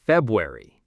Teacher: The R is basically silent, February. Some people might emphasize it a tiny bit, but mostly it's just gone.